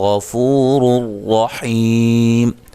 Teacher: رُّ دونوں راؤں کو موٹا ادا کریں گے · اللہ کو موٹا ادا کریں گے، اس سے پہلے زبر ہے، غین کو موٹا ادا کریں گے